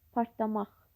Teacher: Partlamaq sözündə isə vurğu sondadır. Hər ikisinin demək, ehtiramla sözünün vurğu 3-cü hecada, partlamaq sözündə də vurğu 3-cü hecada, yəni sondadır.